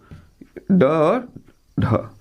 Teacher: इनके उच्चारण में जीभ पहले ऊपर उठती है जीभ क्या होती है पहले ऊपर उठती है और मुर्धा से जाकर टकराती है फिर वापस लौटकर आती है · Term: उत्क्षिप्त व्यंजन